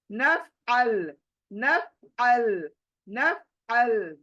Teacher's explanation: ये आइन कहां बैठा है हलक के बीच में बैठा है इसलिए हमें क्या करना है दिमाग को अपने हलक के बीच